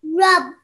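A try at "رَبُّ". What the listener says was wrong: You put pressure on it, but just remember there is a dhamma. So you're giving an oo sound.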